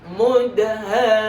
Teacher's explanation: Jadi ha panjang 6, mim dengung 2 harakat.